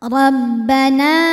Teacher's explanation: huruf Roho dibunyikan secara tafkhim karena D berharakat di atas yaitu harakat fathah cara membacanya ro ditebalkan